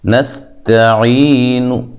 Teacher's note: میں نے نون کی مکمل حرکت نہیں پڑھی بلکہ اس کا کچھ حصہ پڑھا ہے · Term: روم